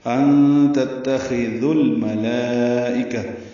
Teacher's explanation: ذو واو مدہ ہے لیکن ذال کو الملائکہ کے لام سے ملا دینا ہے، بیچ میں واو الف الف نہیں پڑھنا